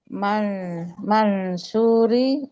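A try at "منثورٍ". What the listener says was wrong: Akhir jangan lupa. Baina mansurin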